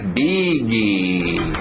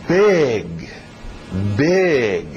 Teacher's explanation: Vamos com o I aberto, som de E.